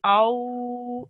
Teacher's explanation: it's two seconds it's called the soft elongation